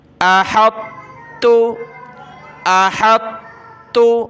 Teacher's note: شروع میں تھوڑی سی طا پڑھنی موٹی، پھر اس کے بعد پورا مکمل تا پڑھنا ہے باریک۔